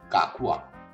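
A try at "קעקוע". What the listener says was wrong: You know the A, the Aleph in Hebrew. Ah. But we have an Ein. Ein, which is an A with a throaty sound to it. Ein. So Kakua has two Eins. Kakua.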